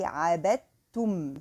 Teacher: there is a kind of merging also for the letters dal with the ta